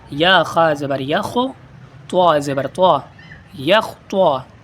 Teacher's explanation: اس میں خا اور طا دونوں کو پر کرنا ہے